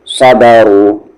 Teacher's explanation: صاد تو heavy letter ہے ہی، اور را یہاں پر ہیوی ہوگا کیونکہ اس پر پیش ہے، اس کی آواز سامنے جا رہی ہے